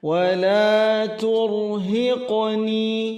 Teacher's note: Turhiqni, huruf rohnya tabkhim atau tebal karena sebelumnya ada dhammah. Hiqni, qalqalah sughra, cara mengqalqalahkannya berjalan, tidak dibaca terhentak pada bunyi suara huruf hamzah